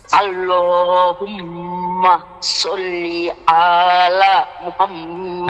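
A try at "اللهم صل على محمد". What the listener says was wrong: আচ্ছা শোনেন, সল্লি আয়ের মধ্যে টান দিছেন, এই জন্য আপনার ভুল হয়েছে।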